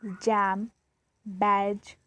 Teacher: Air is blocked with the tongue just beyond the alveolar ridge. This is post alveolar and then released as a fricative.